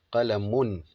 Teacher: The only difference is nunu sakina, you see the nun, while tanween, you don't see the nun. The nun is invisible, but you can hear the sound of the nun.